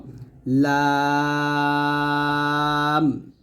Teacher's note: লাম জিহ্বার গোড়ার কিনারা উপরের মারিতের সঙ্গে লাগে লামটা পাতলা করে উচ্চারণ করব